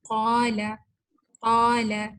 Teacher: قاف جو ہے یہ موٹا اور اس کے بعد جو الف ہے وہ بھی مفخم یعنی موٹا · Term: تفخیم